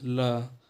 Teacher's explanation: जैसे कोई वर्ण बोले, जैसे इसमें आ जाता है ल, ल को बोलेंगे तो मसूड़े के पास जा रही है जीभ ल, और हवा देखेंगे तो दोनों किनारों से निकल रहा है, जीभ के दोनों किनारों की उधर से निकल रहा है। तो यानी इसमें जो हवा है तो निकलती है वो जीभ के किनारे से होते हुए निकलती है, इसलिए हम इसे पार्श्विक कहते हैं।